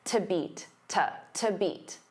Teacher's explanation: because to is a preposition, it becomes unstressed.